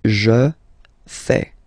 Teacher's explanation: Remember, final S not pronounced.